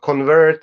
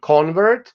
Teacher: So in this case, with convert and convert, you form the verb by moving the stress of the noun, which is on the first syllable, to the second syllable, which indicates the verb.